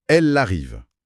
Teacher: Le L se rattache au A · Le « elle » se rattache au « a ». C'est ça. Le L forme la syllabe la. Encore une fois, la frontière est effacée. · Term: Enchaînement